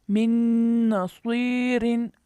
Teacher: नून की वजह से नून साकिन का इदगाम बिल गुन्ना हुआ, नाक में आवाज़ लेके गए।